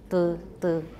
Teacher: That's a very high back unrounded vowel.